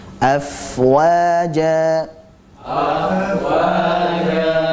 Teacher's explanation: Fa-nya kita alirkan karena fa memiliki sifat rokhawah dan juga hamas. Dari segi suara dan nafas dia sama-sama mengalir.